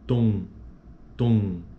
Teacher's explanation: você vai perceber que existe mesmo ar em outra região que não somente na boca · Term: vogais nasais